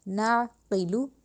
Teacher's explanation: کننا نسمعو، نسمعو نہیں کرنا، عین پہ شعو، نسمعو او نعقلو، پھر عین کی حلق سے نکالنی ہے آواز، ناقلو نہیں کہنا، یعنی الف نہیں بنانا عین کو ، ناقلو بالکل غلط ہے، نعقلو قوف کو موٹا کر کے